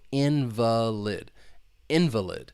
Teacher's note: The stress is on that first syllable. That second syllable has that schwa sound.